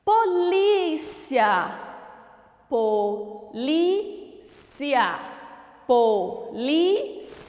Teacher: a antepenúltima sílaba é a pronunciada com mais intensidade ela é chamada de proparoxítona o Olá você sabe o que